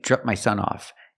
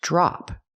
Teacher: We have to use the short ah sound like hot and stop. It's more open.